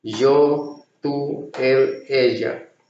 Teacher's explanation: Y before vowel sounds like J, double L before vowel sounds like J.